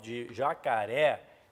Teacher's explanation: O timbre, pessoal, de jacaré é o timbre aberto, representado pelo acento agudo.